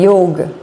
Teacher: you will hear some especially Indian speakers say yog without the a at the end